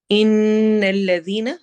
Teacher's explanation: نون پر غنہ کرتے ہوئے، الذین دال کو نرمی سے پڑھنا ہے اور یا مدہ کرنا ہے.